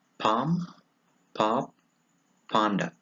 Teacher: Number 1, p. It is a voiceless bilabial.